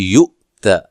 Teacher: حمزہ کو جھٹکے سے پڑھنا ہے